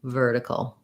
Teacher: basically almost no vowel there. If anything, a little schwa, but go almost as quickly as you can from the K to the L. Vertical, long, short, short.